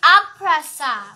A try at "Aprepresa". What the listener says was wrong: No, it's A. Another pre here. Can't you say another pre here?